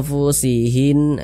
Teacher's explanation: kadar samar dan kadar dengungnya pun dia juga seimbang begitu di tengah-tengah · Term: ikhfa Hakiki ausat